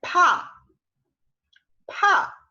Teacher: es una P, un sonido de la P, pero expulsando aire